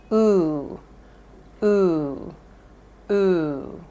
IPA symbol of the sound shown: u